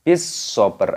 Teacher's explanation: shadnya berharokat tasydid, ini ditekan, dimasukkan, diidghamkan. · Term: alif lam samsiyah